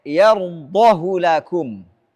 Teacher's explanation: Walaupun diapit oleh dua yang berharakat tapi tidak dibaca silah. Tidak boleh baca panjang. Harus dibaca pendek.